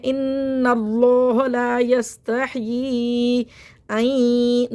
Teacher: نون ساکن کے بعد یا آ رہا ہے ینمو کے حرف میں سے، تو یہاں پہ ادغام محال غنہ ہوگا، یعنی کہ ہم نون کو یا سے ملائیں گے بھی اور غنہ بھی کریں گے. این ناک میں وصل جائے گی.